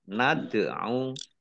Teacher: Fakul ta'alau ain fathah alif at-tobi'i panjang 2 harokat. Ad'au dal sukun bacaan kolkolah atau memantul ya.